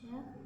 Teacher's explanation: ujung lidah bagian tengah dengan langit-langit yang lurus di atasnya